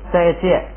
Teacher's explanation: 本来这个后边这个是读送气的，就是且，本来是且，结果它放在第二音节呢就不能送气了